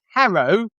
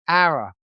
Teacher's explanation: so yeah we just dropped the h's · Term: drop the h's